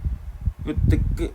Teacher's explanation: 무성자음 발음하면은 누구한테 힘이 많이 들어가냐면 목에 힘이 많이 들어갑니다. 목에 힘이 들어가면은 목이 긴장을 하고요. 목이 긴장을 했기 때문에 으뜨끄 이런 소리가 납니다. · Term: 경음